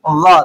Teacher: ऊपर वाले जो मसूड़े हैं, ऊपर वाले जो दाढ़ है, उसके साथ जुबान को मिलाना है। वाद अदा होता है जुबान की बाईं करवट ऊपर की बाईं दाढ़ों की जड़ों से।